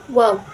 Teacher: wau atau wa antara dua bibir atas dan bawah.